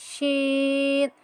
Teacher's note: শিনটা হবে জিহ্বার মাঝখান উপরের তালুর সাথে লাগিয়ে, জিহ্বার মধ্যখানে যেটা আছে মধ্যখানের তালু সেটা উপরের তালুর সঙ্গে লাগিয়ে শিন।